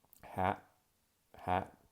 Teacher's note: you can hear at the end of that word that there really is an unreleased T sound